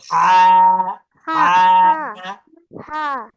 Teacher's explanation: good আচ্ছা এই এই হা কিন্তু উচ্চারণ হবে একটু কণ্ঠনালী থেকে কণ্ঠনালী থেকে হা উচ্চারণ হবে ভিতর থেকে উচ্চারণ হবে